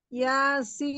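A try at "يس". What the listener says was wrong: Masya Allah.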